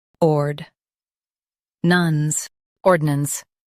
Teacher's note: Emphasize ord and keep nance soft.